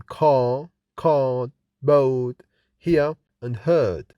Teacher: Accent is called non-rhotic because the R is not pronounced after a vowel